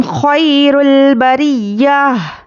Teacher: हुम खैरुल बरिया, ख्वाया ज़बर ख्वई, यालीन है, नरमी से जल्द अदा करेंगे। रॉ पर पेश है तो रॉ को पुर पढ़ना है। · हुम, हा में पेश हुम, यहाँ पर देखिए, यहाँ पर भी क्या है, इजहार शफवी का कायदा है, तो यहाँ पर हमें बिल्कुल भी नहीं ठहरना है, मीम को ज़ाहिर करके जल्दी पढ़ेंगे